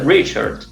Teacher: el caso de research también está acentuada en la primera sílaba